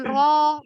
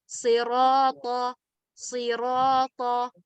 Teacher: Jadi bukan ro, jadi bibirnya nggak maju.